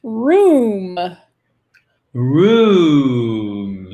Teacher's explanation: C'est long. C'est pas room, c'est room. OK? C'est un ou déstressé, tranquille, qui traîne. Room. Prends son temps.